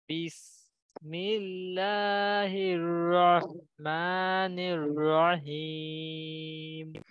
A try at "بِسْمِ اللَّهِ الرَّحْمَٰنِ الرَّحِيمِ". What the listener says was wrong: আপনার সবচেয়ে বেশি যেটা প্রয়োজন ওইটা হইলো হায়ের মাখরাজে আর একটু চাপ দাও, হলকের মধ্যখান থেকে